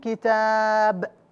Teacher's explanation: كتاب هنا موجود تنوين ضم لكن بسبب اني وقفت على هذه الايه الكريمه فاصبح هنا تسقط النون الساكن لا تلفظ لماذا لاني وقفت على هذه الايه الكريمه وقوله تعالى وكفى بالله